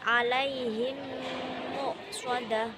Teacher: Adapun cara membacanya adalah mem sukun dimasukkan atau digabungkan dengan mim di depannya dan berdengung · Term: idgham mimi